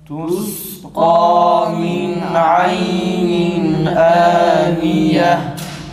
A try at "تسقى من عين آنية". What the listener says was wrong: Sindeki hem sıfatına biraz daha dikkat edelim.